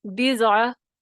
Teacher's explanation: تفخیم ہوگی، پیچھے سے بلند ہوگی زبان کی جڑ